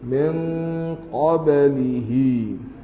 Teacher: Qaf huruf tebal. Bunyi tebalah juga qaf dia tu.